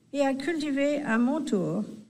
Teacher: the final R is extremely subtle. It's really nicely done because she doesn't go with the R, I mean the R that could come from English, not at all, and she doesn't fall in the trap of going for the R like that too much.